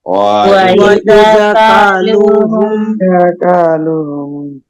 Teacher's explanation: أو وزنوهم يخسرون দেখেন ওয়াইদা এখানে আমরা এক আলিফ টেনে পড়বো কা এক আলিফ টান লু এক আলিফ টান হুম কোনো গুণনা নাই